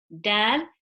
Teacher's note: tip of the tongue, touching the gums of the upper front teeth